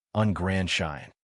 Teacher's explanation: The next word starts with a consonant, so the D does not surface